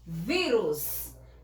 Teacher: a sílaba mais forte é vi